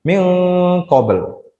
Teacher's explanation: Jadi ada nun sukun bertemu dengan qaf, dibaca ikhfa, dua ketukan.